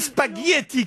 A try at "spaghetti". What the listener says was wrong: Moi j'entends yeux, j'entends pas gueux.